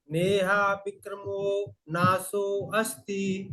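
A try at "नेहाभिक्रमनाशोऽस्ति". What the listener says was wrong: देखिए यहाँ पर नेहा भी क्रमो नाशोस्ति, नाशोस्ति, नाशो अस्ति नहीं, नाशो अस्ति नहीं बोलेंगे, नाशोस्ति।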